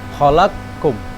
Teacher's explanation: Khalaqum benar-benar hilang qof-nya. Khalakum langsung ke kaf. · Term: idgham kabir